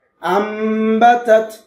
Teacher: ছোট মিম দ্বারা পরিবর্তন করে গুণনা করে বললাম